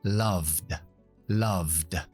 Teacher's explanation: la ve al final tiene que ser un sonido sonoro